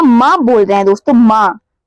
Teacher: तो नाक से भी इसका उच्चारण स्थान हो गया दोस्तों, और होठ से भी उच्चारण स्थान हो गया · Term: ओष्ठ और नासिका